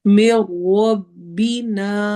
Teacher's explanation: نا میں الف مدہ ہو رہی ہے، 2 حرکہ لمبا ہوگا